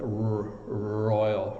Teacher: the R, your tongue's actually in the back of your mouth, so you're like royal.